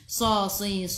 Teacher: baca dengan tebal, sifat hurufnya itbaq